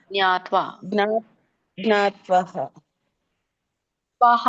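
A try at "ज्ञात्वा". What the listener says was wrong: ಇಲ್ಲ ಅಲ್ಲಿ ವಿಸರ್ಗ ಇಲ್ಲಲ್ಲ ಮಾತಾಜಿ ಅನುಸ್ವರ ವಿಸರ್ಗ ಸ್ವಲ್ಪ ವ್ಯತ್ಯಾಸ ತಿಳ್ಕೊಳ್ಳಿ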